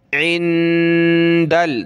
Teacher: नून साकिन है, नाक में आवाज़ पैदा करेंगे, दाल को लाम के साथ मिलाएंगे।